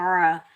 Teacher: आइन को हलक के दरमियान से अदा करेंगे, बगैर खींचे पढ़ेंगे।